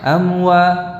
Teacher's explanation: Jadi hati-hati di dalam mengucapkan mim sukun yang bertemu dengan waw di sini, di mana ada kesamaan makhraj antara mim dan waw, sehingga kalau kita tidak memperhatikan dengan seksama ya, pengucapan mim ini bisa terbaca ikhfa amwa, jadi belum betul-betul menempel bibir ini, belum betul-betul terucap ya, masih setengah amwa ya, terutama kalau membacanya dengan tempo yang cepat ya, bukan amwa tetapi jelas jadi satu-satu harus dibaca, dikeluarkan dari makhrajnya.